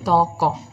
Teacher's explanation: bunyi yang dihasilkan bagian lidah belakang naik